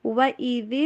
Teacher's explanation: ذال کو ادا کرتے ہوئے اپنی زبان کی نوک کو اوپر والے سامنے والے جو 2 دانت ہوتے ہیں اس سے باہر رکھتے ہیں زبان کی نوک کو